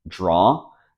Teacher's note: the letter D doesn't sound like a d as in dog day when it comes before R it kind of sounds like J as in James · the only thing you have to do to pronounce it correctly is to eliminate the W sound it rhymes with saw law